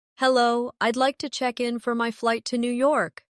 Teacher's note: Hello, I'd like to check in for my flight to New York. Notice how check in sounds like one smooth unit. No pause in the middle.